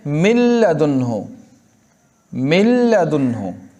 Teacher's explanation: نون کو لام سے بدل کے ادغام کیا. دیکھو، نون کو لام بنا کر دونوں لام کو ایک کر دیا، چنانچہ پڑھنے میں صرف لام آتا ہے، اگرچہ لکھنے میں نون بھی باقی ہے.